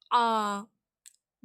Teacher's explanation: நடு தொண்டையிலேருந்து சவுண்டு வரணும்